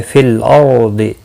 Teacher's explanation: را ساکن سے پہلے زبر ہے، پر پڑھا جائے گا۔ ضاد مستعلیہ ہے، پر پڑھا جائے گا۔